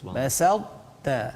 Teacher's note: Tetapi dalam kalimah laim basalta ini dia tidak dibaca dengan secara qalqalah. Bahkan dia dibaca secara idgham naqis. Idgham naqis maksudnya sebahagian daripada sifat ta itu ya dimasukkan ke dalam huruf selepas dia.